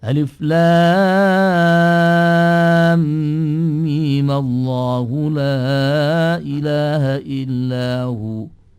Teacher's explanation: Karena tidak sukun, ya yang namanya mat bertemu dengan harokat itu ya menjadi mat tabi'i. Sehingga sebagian ulama di dalam riwayatnya mimnya itu dibaca dengan ukuran 2 harokat